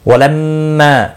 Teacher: میم مشدد پر گنہ ہوگا، ما الف مدہ ہے، ایک الف کے برابر کھینچ کر پڑھیں گے۔